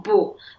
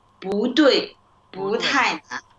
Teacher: like when you use it separately, you say 不. 不 You use the falling tone 不. But when you put it together, you use the raising tone like 不 对, 不 太 难.